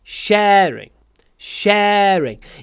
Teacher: Гласный э намного длиннее, чем второй слог.